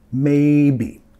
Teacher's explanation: La acentuación de la palabra acá, enfatizando la primera sílaba